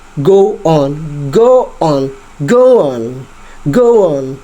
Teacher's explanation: Kayak kita ada menambah unsur way gitu di tengah-tengah kata kita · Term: intrusion